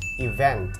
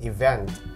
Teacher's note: Nah kalau misalkan katanya event pakai T di belakang itu acara, dan teman-teman ketika bunyi ini atau lafalinnya harus event. Oke, stressingnya di syllable atau suku kata yang kedua